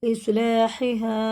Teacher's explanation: بڑا ہا حرف حلقی ہوتا ہے، حلق کے درمیانی حصے سے نکلتا ہے